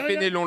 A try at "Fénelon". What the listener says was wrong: Il n'y a pas d'accent. Il n'y a pas d'accent sur le deuxième E.